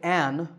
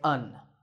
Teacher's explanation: In speech, we don’t say ‘an’, we say /ən/.